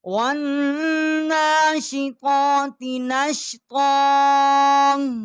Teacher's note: وَالنَّاشِطَاتِ نَشْطًا، اور واؤ کو نون کے ساتھ ہم نے مشدد کیا ہے، نون کے اوپر کھڑی زبر ہے، 1 الف جتنا آواز یہاں بلند کی ہے